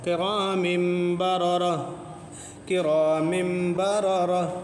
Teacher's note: اس کو ملائیں گے، تو جب ملائیں گے تو اقلاب ہوگا، اس میں تنوین میں نون ساکن پوشیدہ ہے، اس کا اقلاب ہوگا